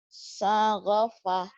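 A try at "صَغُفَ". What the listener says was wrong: Enggak ada yang panjang.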